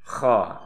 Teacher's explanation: Kha ini makhrajnya adalah di ujung tenggorokan.